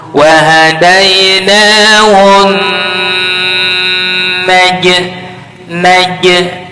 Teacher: nun syiddah, tahan 3 harkat, jangan buru-buru